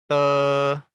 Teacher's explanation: T dibaca ada hembusan angin. Ujung lidah pada langit depan. Lalu berikan hembusan darah di antara lidah dan lelangit.